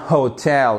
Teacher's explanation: Et même si vous avez, voyez ici votre apostrophe qui montre qu'on a l'accentuation sur la seconde syllabe. On a bien hotel et pas hotel.